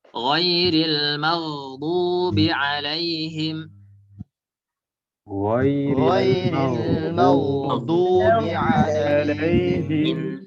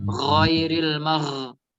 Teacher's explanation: Tidak boleh bergetar sebagaimana huruf kha.